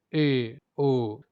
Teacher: उच्चारण में मुख आधा बंद रहता है। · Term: अर्ध संवृत